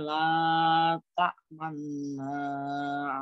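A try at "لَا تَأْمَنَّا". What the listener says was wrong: Tadi masih belum terlihat ya mencucunya ya. La ta'manna. Nah, seperti itu cara membacanya. Jadi ada mencucunya. Di tengah-tengah dengungnya ini ada mencucunya. La ta'manna. La ta man. Nah, seperti itu nggih. Man man. Nah, jadi man mencucu. Terus dikembalikan lagi. La ta man na man. Tapi kalau suara tetap sama.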